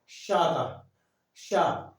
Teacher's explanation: हवा जो है ऊपर तालु में टकराती है, तो उसका उच्चारण होता है तालु से। शा का शा जीभ वापस लगती है जाकर के।